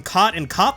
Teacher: I pronounce the vowels in COT and CAUGHT the same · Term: COT-CAUGHT merger